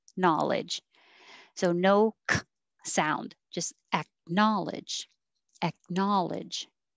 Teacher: going from the k to the n without saying ek